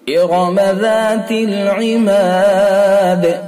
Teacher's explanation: وقف کریں گے تو دال ساکن ہو جائے گا، اور دال ساکن ہو جائے گا تو اس کے اندر قلقلہ کیا جائے گا